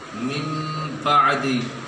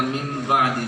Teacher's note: اقلاب کا ایک ہی قاعدہ ہے، نون ساکن کے بعد اگر با آئے تو میم سے بدل کر پڑھیں گے، من بعدی، چھوٹا سا میم آ جائے گا، من بعدی۔